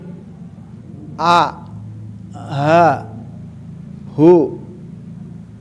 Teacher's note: Huwal, hu adalah huruf aqsol halqi sama dengan alif